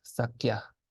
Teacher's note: Because the sa is mute in this case